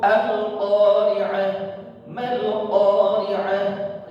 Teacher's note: qafnya jangan dibaca panjang-panjang, cukup berapa? 2 harakat qafnya. Karena ini adalah mad asli.